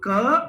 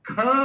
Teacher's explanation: जैसे ही आप बोलोगे क तो बड़ी सरलता से निकल आया, पर जैसे ही बोलते हो आप ख तो जोर लगाना पड़ा। नोटिस करो, दोनों को एक साथ बोलो क, ख, तो जैसे ही ख बोलते हो तो पूरे कमर तक इसकी दम निकलता है, और यहां से इस वाले हिस्से से ये उठ करके चलता है। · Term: अल्प प्राण